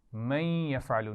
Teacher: نون ساکن کے بعد یا ہے تو ملائیں گے غنہ کرتے ہوئے